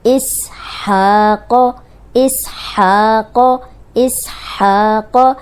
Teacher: قوف موٹا ہے، اس پہ پڑی حرکت زبر ہے تو اس کو لمبا ہونے سے بچائیں گے